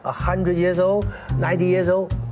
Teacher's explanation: when they come across an L near the end of a word in English, they tend to pronounce it more like a vowel.